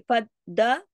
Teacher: اب دیکھیے فد, پہلے فد اور پھر دال کھڑی زبر ہے نا الف کے برابر, سختی سے جوڑنا ہے. فد دال کی آواز 2 دفعہ آنی چاہیے